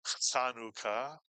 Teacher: And we tend to transliterate the Chet with the English letters CH, because there is no CH ch sound in Hebrew, and therefore the CH is used to express the rolling of the throat, the slight clearing of the throat